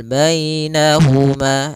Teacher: Di sini ada ya sukun didahului dengan fathah. Ini bacaan lin lagi lembut dalam pelafalannya.